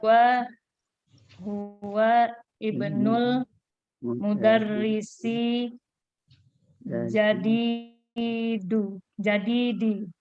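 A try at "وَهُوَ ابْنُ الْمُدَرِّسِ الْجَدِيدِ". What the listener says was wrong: Huwa karena ini ada hamzah. Hamzahnya hamzah wasal. Maka langsung ke huruf ba-nya. Huwa ba'nu.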